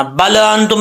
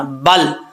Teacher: لام کے مخرج میں جب زبان پہنچے زبان تو وہیں پہ جم جائے، واپس نہ آئے. واپس آئے گی تو قلقلہ ہو جائے گا، وہیں پہ جم جائے گی تو صحیح مخرج لام کا ادا ہو جائے گا.